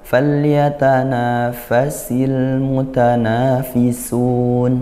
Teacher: fa sin yang bergandeng-gandengan seperti ini dia sama-sama desis sama-sama hames ya tapi makhrajnya berbeda.